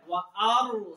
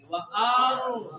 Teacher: اس کے بعد کیا را ساکن ہے، ساکن سے پہلے زبر ہے وارسل، را زبان اوپر کی طرف، آواز بھی منہ بھر کے آئے گی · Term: را موٹی